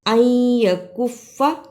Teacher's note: ان یکف ادغام ادا کرنے کا طریقہ نون ساکن اور یا دونوں حرفوں کو ملا کر پڑھنا ہے. ان یکف، اسے ان یکفا نہیں پڑھنا، الف زبر نون یا.